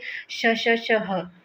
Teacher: जैसे श ह आप देखेंगे कि इसमें गर्म हवा मुंह से बाहर निकल रही है। ऊष्म व्यंजन का उच्चारण करते समय मुख से देखिए घर्षण होता है। मुख से वाई की रगड़ के कारण ऊष्मा उत्पन्न होती है।